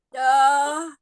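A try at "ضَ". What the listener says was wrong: Masih do. Kurang naik pangkal lidahnya. Mungkin kalau secara makhraj mungkin sudah menempel ya, sisi lidah menempel di geraham atas. Tapi dia belum isti'la, belum naik pangkal lidahnya.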